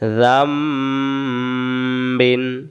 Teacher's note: বদল করা, অর্থাৎ নুনটাকে বদল করে মিমটা দিয়ে পড়া, নুনটাকে বাদ দিয়ে মিম ধরে বদল করে পড়া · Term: ইকলাব